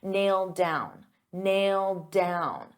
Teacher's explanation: I'll pronounce it as one and you'll only hear one D sound